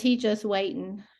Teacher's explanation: dropping her G the way I do, the way we both have always done.